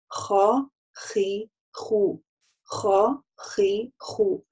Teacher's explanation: Горловая буква, верхнее горло задействовано при произношении этой буквы. Опять же, акцентирую внимание, чтобы вы не делали твёрдость за счёт округления махраджа, да, или округления губ.